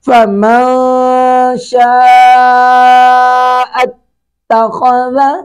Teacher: فمن شاء، فمن نون ساکن کے بعد شین ہے، اخفا کریں گے، شین پر شین کے ساتھ الف مدہ ہے، الف مدہ کے بعد حمزہ آ رہا ہے اس لیے الف کے اوپر مد متصل ہے